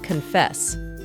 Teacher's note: remember to stress the second syllable